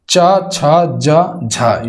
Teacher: तालव्य व्यंजन है, यानी कि तालु से बोली जाने वाले व्यंजन है।